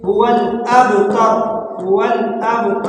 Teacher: ان شانئک، شانئک، یہ والا کاف باریک پڑھیں گے۔ هو الابتر، با میں تھوڑا معمولی جٹ کریں گے۔ با میں نے آپ کو پہلے ہی بتایا تھا کہ یہ حروف قلقلہ میں سے یہاں پر قلقلہ کریں گے، یہاں پر تو ہلکا سا قلقلہ کریں گے، هو الابتر، هو الابتر، اور را کو موٹا کر کے پڑھیں گے۔